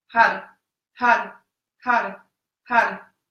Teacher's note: You're looking at a point straight ahead and you're chanting Har, H-A-R. And the R, the tip of the tongue touches the roof of the mouth. It's like a rolled R.